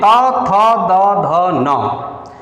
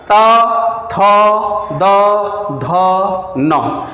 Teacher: त बोलिए, तब भी जिह्वा जाकर के दांत से लड़ जाती है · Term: त वर्ग